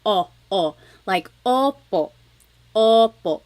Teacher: I think of it like having a ball in your mouth your tongue gets kind of pushed back and down a little bit and the inside of your mouth is open and wide